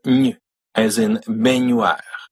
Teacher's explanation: This is an N made with the middle of your tongue touching your hard palate. It's kind of like saying a Y, y, and an N at the exact same time.